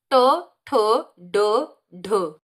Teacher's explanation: जीभ जो है वो पलट रही है, और कहाँ लग रही है, जो मूर्धा पे। मूर्धा का मतलब जो तालु का कठोर स्थान है, ये बीच में, यहाँ पे ऊपर देखिएगा। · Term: ट वर्ग